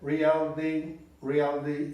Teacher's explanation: reality é a pronúncia meio D, meio T dessa palavra.